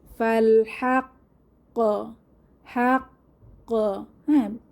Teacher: ফাল হাক্ক একটা প্রতিধ্বনি হবে এবং জোরালো প্রতিধ্বনি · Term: কলকলা